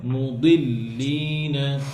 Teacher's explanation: জিব্বার সাইড দিয়ে বলেন মুদি জিব্বার আগা দিয়ে বলে মুদি দাল হয়ে যায়